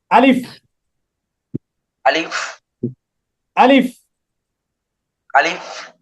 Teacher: জিহবারও কাজ নেই গলারও কাজ নেই মুখের খালি জায়গা থেকে উচ্চারিত হবে